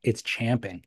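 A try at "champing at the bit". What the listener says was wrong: You pronounce it chomping. It's spelled champing, but it's pronounced chomping at the bit.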